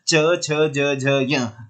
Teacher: आपकी जीभ तालु पर टकराती है।